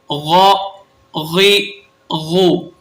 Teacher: ان کا مخرج ہے ابتدائے حلق، یعنی حلق کا وہ گلے کا وہ حصہ جو منہ سے جڑا ہوا ہو، یہاں سے بھی دو حروف ادا ہوتے ہیں، غین اور خا۔